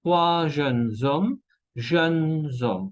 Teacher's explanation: La S se cambia en Z con la vocal O de homme